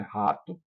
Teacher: o R inicial de rato pode soar como um H aspirado, como a gente pronuncia aqui no Nordeste, né? Rato, como na palavra inglesa have.